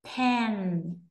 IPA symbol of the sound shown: p